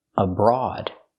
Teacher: The first syllable is not stressed, so we use a schwa, abroad. And the OA is special here.